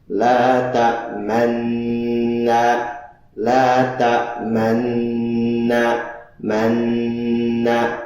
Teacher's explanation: nun yang dhammah yang telah terjadi proses idgham kabir pada kata tersebut hanya diberikan isyarat dhammah, bukan nu, tapi hanya isyarat. Tidak ada bunyi sama sekali. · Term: ishmam